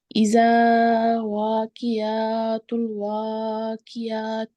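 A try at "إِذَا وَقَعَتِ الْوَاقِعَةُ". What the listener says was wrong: وا کی یہاں زبر ہے.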